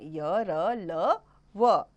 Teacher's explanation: इन व्यंजनों के उच्चारण में मुंह से किसी भाग से जीभ का पूरी तरह से स्पर्श नहीं होता है अर्थात जीभ बहुत ही हल्का सा स्पर्श करती है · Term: अंतस्थ व्यंजन